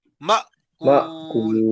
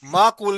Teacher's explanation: مأکول مأکول میں دیکھو حمزہ سے پہلے زبر ہے مأکول مأکول جھٹکا دیں گے حمزہ ساکن ہے